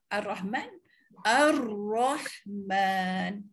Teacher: Keadaan hujung lidah dalam keadaan bergetar ketika menyebutnya. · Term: takrir